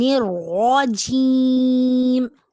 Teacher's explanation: را کے اوپر زبر ہے، را کو پر پڑھیں گے، اور جیم میں یا ساکن سے پہلے زیر ہے اور یہ بھی حروف مدہ ہے، اس کو ایک الف کے برابر لمبا کریں گے۔